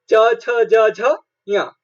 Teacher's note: ई और च वर्ग य और श का उच्चारण तालु होता है।